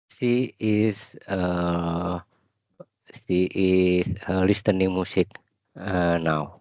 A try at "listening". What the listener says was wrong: Next time if you say listening, do not pronounce the T. It's not listening, no. It's listening like that.